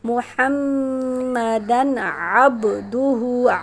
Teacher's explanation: سرخ حروف جو ہوں گے ان میں غنہ کریں گے، محمدن، دن پہ غنہ نہیں ہوگا کیونکہ حروف حلقی میں سے عین آ رہا ہے